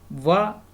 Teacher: दांत और ओष्ठ दोनों से मिला के बोला जा रहा है, संयुक्त ध्वनियाँ, संयुक्त उच्चारण स्थान जो हमने बताया था अभी। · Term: दंतोष्ठ